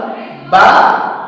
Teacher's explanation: দুই ঠোঁট থেকে উচ্চারিত হয় বা এবং মিম